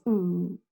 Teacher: the close central rounded vowel and it's rounded